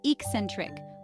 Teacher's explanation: The pronunciation is eccentric, with the stress on the second syllable.